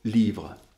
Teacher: cette syllabe unique comporte 4 phonèmes, un phonème consonne, suivi du I phonème voyelle, suivi de 2 phonèmes consonnes, le V et le R